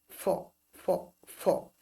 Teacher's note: নট প, আবার নট একেবারে টোটালি ফ, মাঝখানে হবে ফ ফ